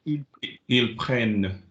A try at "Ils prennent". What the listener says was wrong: No, that's 2 words. Said quickly. Ils prennent. Slide.